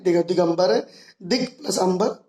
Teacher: का और आ मिलकर के गा बन गया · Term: व्यंजन संधि